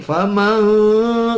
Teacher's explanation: nun ketemu ta dibaca ikhfa ini aqrab hampir masuk ke ta